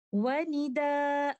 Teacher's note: we stop with two counts of Maddul Iwad, so there will be no Nabr.